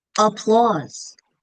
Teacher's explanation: I hear a schwa at the beginning, that A.